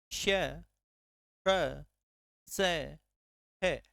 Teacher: श का घर्षण होता है तालू के पास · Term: उष्म व्यंजन